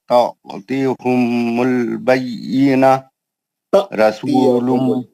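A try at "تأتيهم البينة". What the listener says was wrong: तातियहुमुल बय्यिना। आपका झटका सही नहीं है। झटका झटका झटका ता है, अलिफ पे जज़म है वहां पे।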